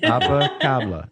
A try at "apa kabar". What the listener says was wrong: kaba. No L. No. Apa kaba Apa kaba.